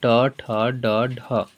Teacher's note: मुर्धा से बोला जाता है